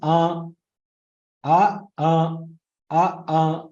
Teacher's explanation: It has a nasal touch to the akara sound. That is called sanunasika akara.